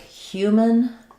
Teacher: it's mostly like a syllabic N. The N is the main sound.